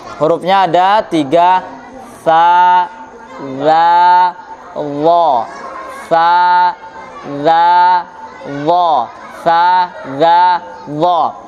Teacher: yang benar itu sebenarnya ujung lisan dengan gigi tempelkan ke gigi seri atas